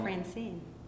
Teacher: a pair of syllables in which the first syllable is unstressed and the second syllable is stressed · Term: iamb